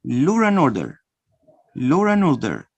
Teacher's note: notice I'm inserting the consonant R to connect the two vowels. Lo finishes in a vowel O, and starts with a vowel A, two vowels.